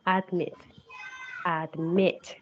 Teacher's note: You have to notice that the last syllable is the one that is stressed.